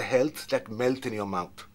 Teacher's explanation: more the more major part of that is the health so the stress is on health